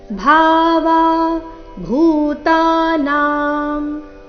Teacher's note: ಈ ಎರಡು ಶಬ್ದಗಳಲ್ಲಿ ಎಲ್ಲಾ ಅಕ್ಷರಗಳು ದೀರ್ಘ ಇವೆ